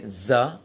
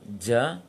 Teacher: ketika mengucapkan jim jangan ditiupkan seperti zai